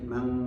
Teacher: Nun mati ketemu kaf, asalnya man ketemu kaf menjadi mang ya. Makhrajnya nun dijauhkan.